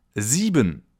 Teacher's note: The letter combination I-E is pronounced like a long E sound